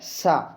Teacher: तालु। अपनी जो जीभ है, जीभ तालु पर लगती है जाकर के, तभी आप लोग देखते हैं सीटी बजती है सा बोलने से। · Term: सीटी वाला सा